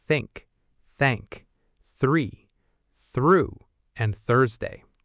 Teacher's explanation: Actually, there are 2 th sounds in English, and they are made in exactly the same position, but one is silent and one uses your voice. The first th is voiceless. You use no voice, just air.